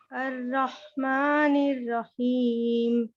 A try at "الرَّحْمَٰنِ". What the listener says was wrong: اب دیکھیں، مگر یہ کہ مجھے رحمان میں تھوڑا سا را کی طرف مجھے لگا، را نہیں، زبان رو